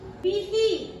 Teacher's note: Kemudian yang selanjutnya bihi, itu terdapat nama tajwidnya di sana matsilah kasirah, karena ada alif tegak berdiri berharakat kasrah. Bacaannya dibaca panjang satu alif atau dua harakat.